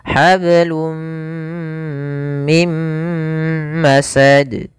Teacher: Maka di sini awalnya hablun, karena ketemu mim masuk ke mim, tanwinnya hilang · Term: idgham bi gunnah